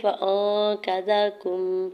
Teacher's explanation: حمزہ کے زبر کو نون ساکن کے ساتھ ملاتے ہوئے اخفا کریں گے